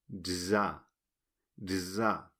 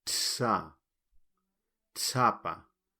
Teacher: Y esto parece ser que se pronuncia como la TZ, pero con la voz. Entonces queda como una D y una Z inglesa. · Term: la Z